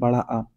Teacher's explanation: जब आप बड़ा आ बोलेंगे तो आपका पूरा मुंह जो है वो खुला रहेगा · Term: विवृत